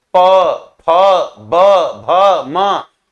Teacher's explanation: जिसमें दोनों होठ आपस में क्रिया कर रहे हैं, सट रहे हैं तो वो ओष्ठ वर्ण होगा। जैसे प, फ, ब, भ, म तो प वर्ग श्रेणी में जो भी वर्ण आते हैं ये ओष्ठ वर्ण होगा।